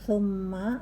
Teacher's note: Summa, mendengung karena mimnya bertasdid